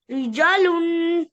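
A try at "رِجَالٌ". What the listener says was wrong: नहीं, अलिफ भी पढ़े। रिजालुन, वक्फन, रिजाल।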